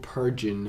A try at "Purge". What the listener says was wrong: I believe it's pronounced purge, by the way. Not purging. right there it says World Purge. Like the movie Purge. The Purge.